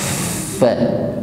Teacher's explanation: Ujung gigi bertemu dengan bibir bawah bagian tengah. Disertai dengan sifat hamas, ada nafas yang mengalir.